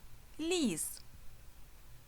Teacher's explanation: перше звук ль пом'якшений приголосний наступний звук і голосний і третій звук с приголосний Отже слово · Перший звук «л» – пом'якшений, приголосний.